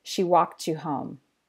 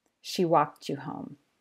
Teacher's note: a final t sound in a word and an initial y sound in the following word fuse to make a ch sound due to a feature of connected speech called coalescence. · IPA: /ʧ/